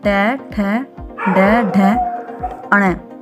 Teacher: स्थान के आधार पर बताइए कि मूर्धन्य व्यंजन कौन से हैं? मूर्धन्य व्यंजन है ट वर्ग।